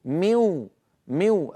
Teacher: الجزء اللساني انعدم تحول الى واو قلب الى واو بينما جزء الخيشومي الازرق اللون بقي بل نطوله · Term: الادغام بغنه